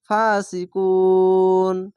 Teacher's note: ফাসিকুন এখানে দেখেন পেশের পরে ওয়াও সাকিন এক আলিফ টান আর এখানে থামার জন্য ওয়াকফ করার জন্য একে সাকিন দিতে হবে তো তিন আলিফ টেনে পড়তে হবে